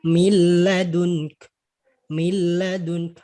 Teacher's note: Kalau nun matinya dibaca jadi min ladunka. Tapi apa? Dia langsung dimasukkan ke huruf setelahnya. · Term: tanpa gunnah